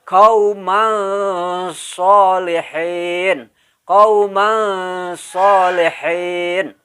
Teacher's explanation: Walaupun bunyi ng-nya tidak terlalu jelas juga. Jadi samar bunyi antara an dengan ng.